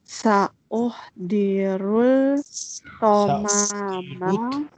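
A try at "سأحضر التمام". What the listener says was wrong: Ta-ha shadda, lam will become silent. Sa-uh-dirut.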